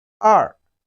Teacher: It has the falling tone, which is the fourth tone of Chinese language.